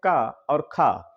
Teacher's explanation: हैं क और ख तो इनमें शवास का प्रयोग होता है नाद का प्रयोग नहीं होता है